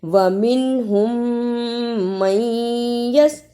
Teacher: میم کو یا سے ملانا ہے اس لیے کہ یا پر شد ہے ، میم زبر یا مئی، یا زبر سین یس، وَمِنْهُمْ مَنْ